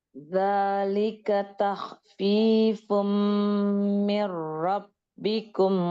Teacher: Kemudian zalika takhfifum ditahan dulu karena ada mim musyaddadah.